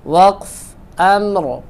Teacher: جب ہم اس پہ وقف کریں گے تو پھر را کو موٹا پڑھیں گے کیونکہ را ساکن ہے